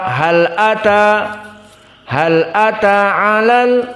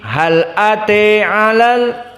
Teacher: Jumhur tadi difathahkan hal ata, dan Al-Kisai dijadikan imalah al-kubra hal ate, dan Warsh an-Nafi' dibaca dengan taklil hal ate.